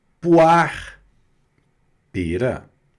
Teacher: não pronuncia o E, e o R vem, né, como se fosse no final só da palavra